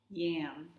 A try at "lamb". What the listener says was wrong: Did you mean yam? Oh, I'm hearing yam. Remember to use our singing L sound and keep your tongue tip up like this. Lamb.